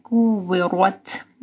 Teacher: واو کے ساتھ آپ کے ہونٹ گول ہوں گے